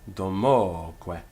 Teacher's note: Domoque, and the accent there falls on the o